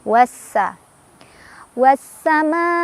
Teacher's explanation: Karena ada alif lam bertemu huruf syamsiyah yaitu sin. Cara bacanya, alif lamnya tidak dibaca, langsung baca ke sin, dari wawu langsung tekan ke sin ya. Oleh karena itu biasa disebut dengan idgham syamsiyah ya, karena cara bacanya diidghamkan langsung ke huruf syamsiyah ya.